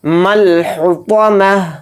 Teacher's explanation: مل حطمہ میم کو لام میں ملا دیں گے, ہا کو اچھے سے حلق سے نکال کر ادا کریں گے